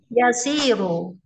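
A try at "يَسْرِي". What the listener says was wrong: Yesri gitu. Yesri mati. Sukun.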